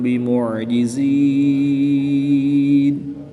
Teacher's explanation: میم ساکن کے بعد حرف با ہے تو یہاں پر اخفاء شفوی ہوگا، غنہ زمانی کر کے پڑھیں گے۔